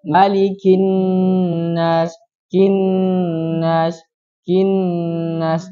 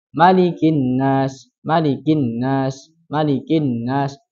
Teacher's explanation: karena itu ada nun yang bertasydid, maka dia harus disempurnakan gunnahnya. Jadi agak panjang.